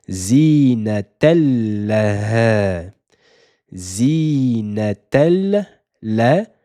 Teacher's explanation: Donc on ne dira pas zinaten, on ne prononcera pas le tenwin, la fathaten. On supprime une fatha et on passe directement sur la lettre lem dédoublée. C'est la règle du idgham et nous ne lui appliquons pas une runna.